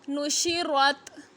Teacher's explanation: را پہ زبر ہے، را کو موٹا کریں گے